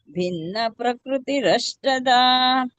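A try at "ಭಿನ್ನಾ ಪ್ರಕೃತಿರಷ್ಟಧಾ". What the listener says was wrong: ದೀರ್ಘ ನೋಡಿ. ಭಿನ್ನ ನಾ ಇದೆ ನೋಡಿ.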